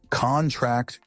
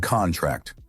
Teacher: Stress on the first syllable is a noun. Stress on the last syllable is a verb.